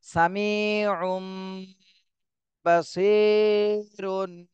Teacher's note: ঠোঁটটা মিলায় যাবে একবারে মিলায় ফেলতে হবে দুই ঠোঁট বন্ধ করে তারপরে গুন্না করতে হবে